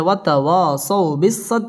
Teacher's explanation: খালি আলিফ একালিফ টেনে পড়তে হবে ওয়াতাওয়াসাউ জবরের বাম পাশে জজম ওয়ালা ওয়াও লিনের হরফ তাড়াতাড়ি পড়তে হবে